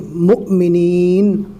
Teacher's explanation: یہاں پر جو حمزہ ہے واو کی شکل میں اور اس کے اوپر جزم ہے، اور کبھی بھی یاد رکھنا ہے کہ جزم والے حمزہ کو پہلے والے حرف سے ملا کر جھٹکا دے کر پڑھیں گے